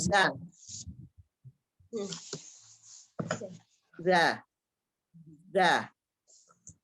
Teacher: Ujung lidahnya antara ujung gigi seri atas dan bawah.